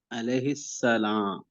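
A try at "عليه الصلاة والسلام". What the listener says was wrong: सलाम वक्फ नहीं करना, क्या पढ़ना है इसके ऊपर? अलैहि। सलामु।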